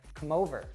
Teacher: we reduce them so for example if I say come over I'd actually connect that m to the next word · I'd actually connect that M to the next word, so I'd say come over.